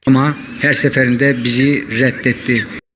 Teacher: Hüzünlü. Aşağı doğru bir tonlama. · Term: alçalan tonlama